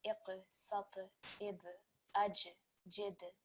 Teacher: you can hear that slight vibration when landing on those letters, and this is what we call the qalqala letters.